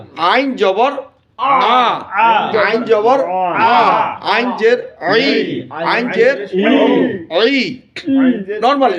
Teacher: আইন হচ্ছে বাতাস বন্ধ, আওয়াজ মধ্যম, মানে সাউন্ডটা নিচেও যাবে না উপরেও যাবে না, মাঝামাঝি থাকবে। আ, যদি আমি বলি আ, ডাউনে চলে গেল, তারপর যদি বলি অ, অট শোনা যাবে, রাখতে হবে মাঝামাঝি, সাউন্ডটা থাকবে কি মাঝামাঝি।